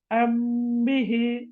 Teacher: மறைக்கிறது என்றது இப்படி சும்மா கற்பனையில ஒரு பொருளை மறைக்கிற மாதிரி அல்ல இதாவது மீமை தொடர்ந்து பா வந்தால் மீமை பாவினால் மறைத்து உதட்ட கொஞ்சம் நாங்க முன்னுக்கு எடுத்து ஓதினா சரி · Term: இஃப்பா சபவி